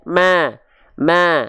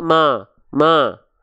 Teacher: mulut sambil senyum tipis-tipis aja ma ma bukan Ma tapi Ma kalau Ma ini tanpa senyum jadinya kadar tipisnya kurang kerasa